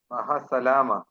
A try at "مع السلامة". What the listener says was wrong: ہے نہیں، ایچ نہیں ہے یہاں پہ، ایچ نہیں ہے یہاں پہ، عین ہے، عین. مع السلامہ.